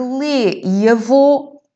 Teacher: lê e avô são sons mais fechados e, portanto, vamos ter um acento circunflexo.